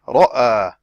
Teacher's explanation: The Ra has elevation here because it is with the Fatha. As I said, the Ra has specific conditions for elevation of the back tongue, of the deepest part of the tongue.